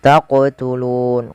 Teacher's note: Taqtulun qaf wajib dipantulkan karena ia ada bacaan qalqalah. Kemudian nun ada bacaan mad arid lis sukun.